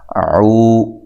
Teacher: واو ساکن سے پہلے پیش ہو اس کو واو مدہ کہتے ہیں، اور اس کو ایک الف کی مقدار کے برابر لمبا کیا جاتا ہے